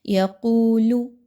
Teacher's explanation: واو مدہ ہے، 2 حرکات کے برابر اس کی ادائیگی رکھیے